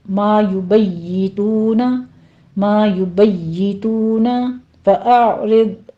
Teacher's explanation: یا کے پر تشدید ہے، نیچے کسرہ ہے، تو باریک رکھیے گا آواز کو